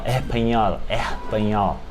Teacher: Em espanhol, o S, às vezes ele soa como aquele R aspirado de espanhol